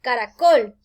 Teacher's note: la mayor fuerza al pronunciar caracol cae en la última